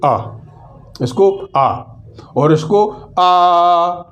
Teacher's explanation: ह्रस्व का उच्चारण में एक मात्रा का समय लगता है, दीर्घ के उच्चारण में 2 मात्राओं का समय लगता है, और प्लुत के उच्चारण में 3 मात्राओं का समय लगता है।